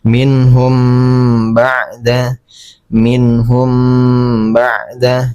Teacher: Jadi di dengungkan ya selama dua harakat. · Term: ikhfa syafawi